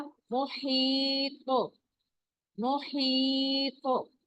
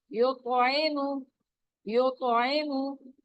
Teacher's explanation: एंड वाला जो है वो बहुत स्ट्रॉन्ग कलकला होगा, और जो दरमियान में आएंगे वो माइल्ड कलकला होगा, यानी उतना ज्यादा स्ट्रॉन्ग नहीं होगा जो एंड वाला होता है।